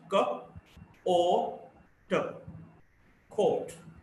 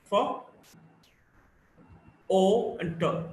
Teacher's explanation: O, see this you can also write as the inverted C with 2 dots. Back, between half open and half close, rounded, short vowel.